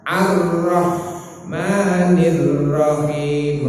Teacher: Takrirnya namun sedikit, getare sedikit teng pucuk ilat boten oleh kaya lam tapi boten kasar. · Roh niku takrir getar nggih.